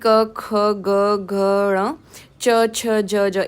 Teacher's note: जिन व्यंजनों का उच्चारण करने में जीवा मुख के किसी भाग को स्पर्श करती है और वायु कुछ क्षण के लिए रुक कर झटके से निकलती है वो स्पर्श संज्ञक व्यंजन है।